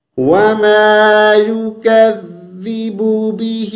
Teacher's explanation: زبان کی نوک تھوڑی سی باہر نکالیں گے، تو جہاں پر بھی یہ لیٹر آئے گا تو زبان کو تھوڑا سا ہم باہر نکالیں گے اور نرمی سے پڑھیں گے. خیال رکھیے گا زا کی آواز پیدا نہ ہو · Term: ذال